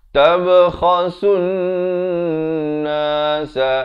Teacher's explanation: tab ada lantunan di sini, ba qalqalah, kha di hujung kerongkong, khasun di sini pula wajibul qunnah dengung dua harakat.